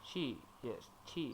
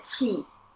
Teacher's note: Yeah, it's the falling tone.